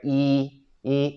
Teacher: it's the flat tone the robot tone